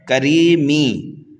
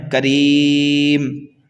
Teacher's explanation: جب ہم وقف کریں گے تو اس میم کو ساکن کر دیں گے، یہاں پر ہو رہا ہے وقف بالاسکان۔